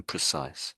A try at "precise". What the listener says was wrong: That's it.